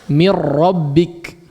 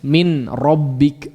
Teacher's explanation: langsung dimasukkan nunnya itu ke huruf ra-nya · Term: idgham